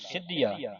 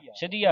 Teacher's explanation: ਇਹਨੂੰ ਸਿੱਧੀਆ ਕਸ ਕੇ ਬੋਲਣਾ ਅਧਕਲਾ ਕੇ ਸਿੱਧੀਆ ਸਿਧੀਆ ਨਹੀਂ ਪੜਨਾ ਪੋਲਾ ਨਹੀਂ ਪੜਨਾ ਇਹਨੂੰ ਕਸ ਕੇ ਬੋਲਣਾ ਸਿਧੀਆ ਯਾਹੂ ਜਤਨ ਕਰ ਹੋਤ ਛੁਟਾਰਾ ਹੁਣ